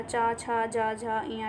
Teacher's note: चा वर्ग है और या और तालव्य शा, इन चारों का जो उच्चारण स्थान होता है वो तालु होता है